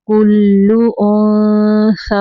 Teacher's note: نون ساکن پہ اخفا کا قاعدہ، انثا یا خالی ہے، یا کو نہیں پڑھنا · اللہ یعلم یعلم ما تحمل ما ہا کو واضح کرنا ہے، ہا نہیں پڑھنا، تحمیلو کلو کلو لام پہ تشدید ہے، کاف کو لام کے اندر تھوڑی دیر ملائیں گے۔ کلو انثا کھڑی زبر کو 2 سیکنڈ تک لمبا کریں گے یعنی 2 حرکات عربیہ۔